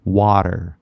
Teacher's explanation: The T is a glottal stop. You don't say it, right? It disappears, right?